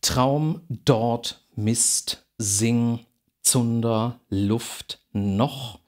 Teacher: diese werden alle am zahndamm also dieser Stufe hinter den Zähnen artikuliert